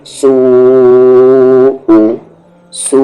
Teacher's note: आगे वाव मद्दा है और वाव मद्दा के बाद हमजा है, यानी कि ये मद्द मुत्तसिल है, कनेक्टेड मद है। और ये जो मद है ये सीन वाव पर है, ध्यान रखें, यानी सू को खींचेंगे, कितना खींचेंगे 5 हरकत के इक्वल।